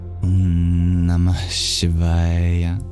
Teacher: The H in Namah, it flows very easily into the sibilant, the palatal sibilant sh of Shivaya. So imagine breathing out at the end of Nama into Shiva. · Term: visarga